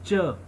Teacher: if you are pronouncing च sound, there is puff of air on the hand